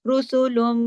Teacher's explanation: آواز کو ناک میں چھپانا ہے دیر تک، اکمل غنہ ہوگا